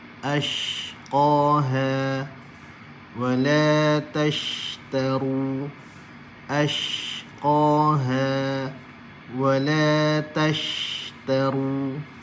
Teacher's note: Bila kita keluarkan suara, secara automatik akan ada sifat huruf shin yang at-tafashi ni, yang berhamburan angin. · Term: sifat tafashi